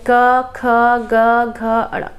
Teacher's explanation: तो क वर्ग के जितने वर्ण हैं, क वर्ग में जितने वर्ण हैं, चाहे क ख ग घ अड़, ये सभी कंठ से उच्चारण होने वाले हैं। आप बोलकर देखिए, क गले से हो रहा है ना, ख गले से हो रहा है, ग गले से हो रहा है। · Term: कंठ वर्ण